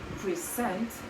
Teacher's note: So for example, a stress on the first syllable, we would say in present, which is a noun, present, but if we would say present, we would, by stressing the last syllable, we would make it a verb